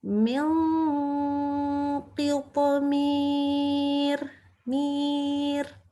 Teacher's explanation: Ro sukun karena wakaf, tapi hurufnya adalah ya sukun. Ya sukun kan bunyinya kasroh juga ya. Maka kita baca tipis.